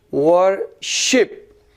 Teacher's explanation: हम वर्शिप को रुक रुक के पढ़ते हैं, देखते हैं वर्शिप, तो ये तरीका है इसको पढ़ने का, तो शिप पे स्ट्रेस आया